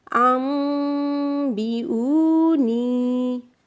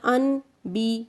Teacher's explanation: मीम पे मैं गुन्ना कर रही हूँ